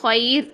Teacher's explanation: را ساکن باریک پڑھیں گے، اس کے پیچھے یا ساکن آ گئی ہے